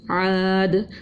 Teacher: دو پیش کی تنوین تھی، وقف بالاسکان کیا اور یہاں پر قلقلہ بھی کیا کیونکہ حرف قلقلہ آ رہی ہے دال